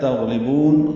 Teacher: تغلبون، غین پر پڑھیں گے، غین ساکن پہ اظہار، لام باریک اور با کو لمبا کریں گے